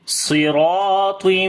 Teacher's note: Ta again we read in heavy sound due to isti'la and itbaq quality. On the meme there is shad sign, we make gunna. · Swad we read in heavy sound due to isti'la letter, and also sifte itbaq.